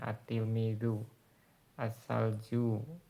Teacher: Nah, ini huruf samsiyah yang tidak nampak pengucapan lamnya ya. Lamnya itu diidgham, jadi dilebur dengan setelahnya.